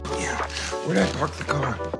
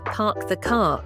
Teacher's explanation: In standard American English, they pronounce the 'R' in words like car and park. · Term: rhotic accent